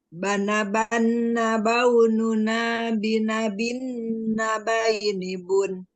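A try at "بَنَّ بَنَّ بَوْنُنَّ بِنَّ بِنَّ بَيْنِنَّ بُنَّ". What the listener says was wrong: Coba dipanjangkan lagi, lebih dipanjangkan lagi gunanya ya. Bana baununa binabina baini bun. Seperti itu.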